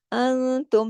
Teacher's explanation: نون ساکن کے بعد تا، اخفا حقیقی، غنہ کاملہ